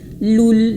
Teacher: Lu bukan lo tapi lu. Moncongkan bibirnya.